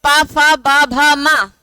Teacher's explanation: दोनों होठ आपस में मिल रहे हैं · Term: पावर के वर्ण